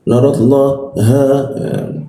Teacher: ha masuk ke tenggorokan bagian bawah